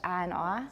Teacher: So ah and ah are the same vowel for many Americans. Not for Brits.